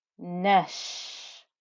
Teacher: the noon joined over to the sheen with the fatha. We ignored the hamzatul wasl.